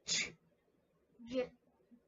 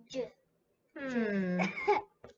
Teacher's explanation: So j is a voice sound. We need to turn our voice on when we say j